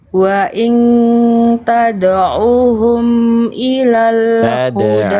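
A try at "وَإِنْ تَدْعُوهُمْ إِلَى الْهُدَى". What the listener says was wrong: Ainnya kecepatan. Nanti Bunda contohkan, Bunda ikuti, perhatikan panjang pendeknya.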